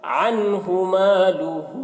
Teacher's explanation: ہو کو زیادہ کھینچیں گے، مد ہے یہاں پر